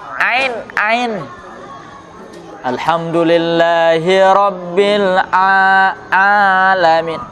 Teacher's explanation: satu huruf Ain diucapkan ke hidung